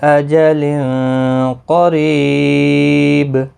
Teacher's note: تنوین کے بعد حروف اخفا کا قاف آیا، اخفا حقیقی ہوگا، گنہ کے ساتھ پڑھیں گے ، قاف مستعلیہ ہے پر پڑھا جائے گا، ری یا مدہ